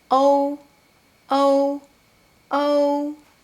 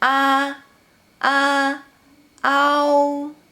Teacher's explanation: “ou” starts with o, o, “ou”. And “ao” starts with a, a, “au”.